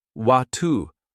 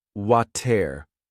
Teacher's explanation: in British English, the word water is often said as watu, while in American English, it's pronounced water